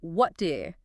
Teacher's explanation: So in fast speech, what do you often turns into what do you. The T in what gets swallowed up by the do you, which itself becomes compressed, is just the natural way our mouths move when we speak at a faster pace.